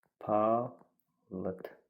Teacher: Palıd sözü d ilə bitirir, o zaman d t-ya keçəcək. Palıd. Burada uzanma yoxdur.